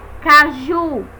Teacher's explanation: percebemos também pelo som que a sílaba mais forte é Ju